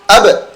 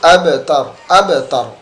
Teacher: tetap memantul tetapi masuknya sughra atau qalqalah dengan pantulan kecil karena ada sambungan kalimat selanjutnya atau huruf selanjutnya